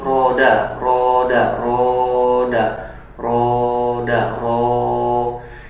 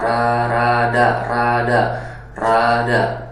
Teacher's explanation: Siapapun yang mendengar bunyi itu pasti dia akan merasakan sensasi tafkhim huruf ro atau tebal huruf ro itu. Beda sama rada, rada.